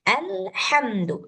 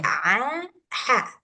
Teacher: Jadi caranya supaya ha-nya ini benar juga kayak si ain, posisikan tenggorokannya itu di tengah ketika mengucapkan ha, sama kayak mengucapkan ain. Jadi, ha, sama dia tempatnya.